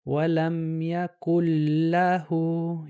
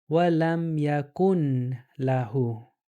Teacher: It, Idgham means whenever you find a noon with sukoon on it, and a lam is followed by it, that lam is going to eat the noon